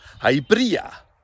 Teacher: Now you can use that slender R sound at the beginning, which is like a voiced TH up here, bdia, or as many native speakers do, you can have a broad R as well.